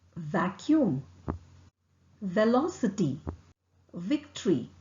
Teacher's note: lower lip is lightly put behind or against the upper teeth it's voiced this means that you let your vocal cord vibrate when pronouncing it · it is articulated using the lower lips and the upper teeth the lower lip is lightly put behind or against the upper teeth it's voiced this means that you let your vocal cord vibrate